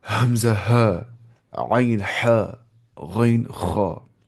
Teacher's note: حمزہ ہا فرام اقصى الحلق, عین ہا فرام وسط الحلق, غین خا فرام ادنى الحلق